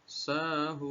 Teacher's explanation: Sehingga hun yang harusnya dibaca 2 harkat berubah menjadi 6 atau 5 harkat karena sudah berubah dari mad tabi'i menjadi mad arid lisukun.